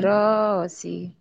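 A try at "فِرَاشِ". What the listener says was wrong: Shy-nya gede. Firashi. Shin. Firashi. Firashi.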